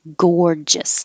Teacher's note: the first g sounds like a ga and the second g sounds like a ja